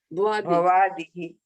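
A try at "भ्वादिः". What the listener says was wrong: Bha is not full there.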